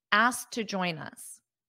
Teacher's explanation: when you connect it with another word, you won't hear that T very much. It will be very soft. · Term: very soft T